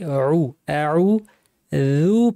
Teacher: আইন কে গলায় চাপ দিয়ে উজু পাতলা করে বলতে হবে অনেকে ভারী করে বলেন ভারী করা যাবে না বিল্লাহি বলার সময়